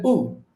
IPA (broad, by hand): ʊ